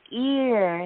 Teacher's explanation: ear has a long e that goes into an r